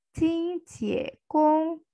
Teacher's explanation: ini ada nada satu, nada dua, dan nada satu